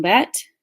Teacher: So, for example, the word bad may become bat and so it kind of sounds like a t sound because there's not enough emphasis on that letter d sound. So, the speaker just doesn't put enough stress on that last letter, so it sounds like another letter. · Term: final consonant reduction